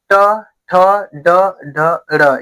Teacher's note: ऊपर जो मूर्धा है उस पे जाके चिप क्या रही है? टकरा रही है